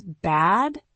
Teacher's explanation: Bad uses the ah sound. You open your mouth wide, like in cat or man.